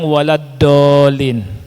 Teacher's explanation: Karena bagian ujung lidah ditekan kemana? Ke depan. Dan ini salah, karena yang keluar huruf dal yang tebal. Yang benar adalah ketika kita ingin mengeluarkan huruf dhad dengan tepat, kita harus menekankan tepi lidah. · Nanti enggak akan keluar suara huruf dhad. Yang keluar adalah huruf dal yang ditebalkan. Makanya ini yang sering dan banyak dari orang kita Indonesia mengucapkan huruf dhad itu huruf dal yang ditebalkan.